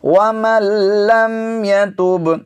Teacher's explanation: یہاں پر دیکھیے نون ساکن ہے، تو اس نون کا ہم نے تلفظ نہیں کرنا، نون کو آگے لام میں ملا دیا گیا ہے، نون کا لام میں ادغام ہو گیا ہے